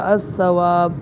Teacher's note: یہاں پر بھی سا سے پہلے لام وہ نہیں پڑھا جا رہا بلکہ یہاں پر ادغام کے ساتھ پڑھ رہے ہیں